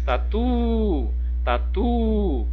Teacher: É porque tem a última sílaba tônica